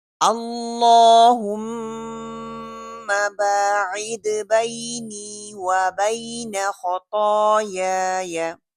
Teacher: मीम की जो गुन्ना है उसको पूरा करना है, पकड़ के रखना है। बाइद दाल को कलकला करना है और आइन के मखरिज को उसके मखरिज पे जाना है।